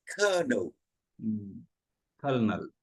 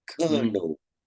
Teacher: there's an L in it but we don't say it